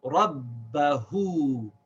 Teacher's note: Now we have the ha with an upside down dhamma. So we pronounce this ha with a long vowel sound, oo. So we say hu.